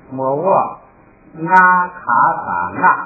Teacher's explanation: 读了莫卧后边就已经变成1声了，然后再加上卡萨就变成4声了